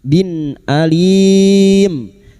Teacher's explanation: Kasr tanwin bertemu hamzah idhar halqi. Kasr tanwin dibaca jelas tanpa mendengung.